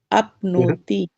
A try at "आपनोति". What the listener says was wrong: आपनोति, आपनोति। ती ह्रस्व है, आप और नो दीर्घ है, आपनोति।